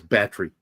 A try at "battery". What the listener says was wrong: No, you still are pronouncing the E.